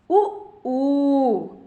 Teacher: இதழ்களை குவிப்பதால் பிறக்கும் உயிரெழுத்துக்கள்